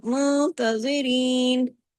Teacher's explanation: زو کو اگر آپ ہیوی نہیں کریں گے تو اس کی آواز تو زا کی طرح ہو جائے گی